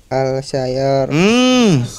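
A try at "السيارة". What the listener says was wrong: Kita sudah pernah belajar asyamsiyah kan? As-sayyaratu bukan al-sayyaratu.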